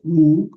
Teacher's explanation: que esto no suena en español como diptongo, suena como una u